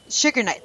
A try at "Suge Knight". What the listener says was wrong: Suge Knight. Well, not sugar. It's just pronounced Suge. It's supposed to be kind of short for sugar, probably, but Suge Knight.